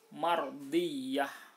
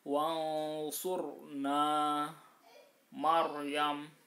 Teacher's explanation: Maryam, nah ini harus dibaca tebal karena apa? Ro sukun didahului fathah atau dhammah